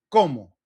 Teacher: We put more emphasis on that first part because it ends in O.